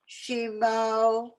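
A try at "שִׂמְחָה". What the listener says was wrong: It's actually not a shin. sin. Sima ha. Simacha.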